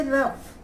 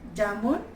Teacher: निश्चित रूप से हिंदी फ और ज में स्फोट अधिक है, घर्षण कम है। अंग्रेजी तथा उर्दू फ ज में कोमलता और घर्षण अधिक है।